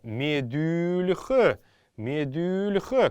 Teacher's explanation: так как это мягкорядное слово, буква «Л» будет произноситься мягко